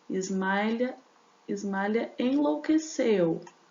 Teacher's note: Terminou em vogal, começou com vogal, eu junto. Na hora da contagem, eu tenho lá 9 sílabas gramaticais, mas eu tenho apenas 7 sílabas métricas, porque por conta dessa contagem aqui, ó.